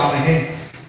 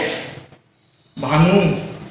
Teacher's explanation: विसर्ग का उच्चारण आधे है की तरह किया जाता है।